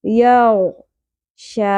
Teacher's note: مد اصلی کھڑی زبر ہے، ایک الف کے برابر کھینچیں گے، اور آیت کمپلیٹ ہونے کی فارم میں بھی مد اصلی مینٹین رہے گی، اسی طرح پڑھیں گے، ٹھیک ہے، چینجنگ نہیں آئے گی۔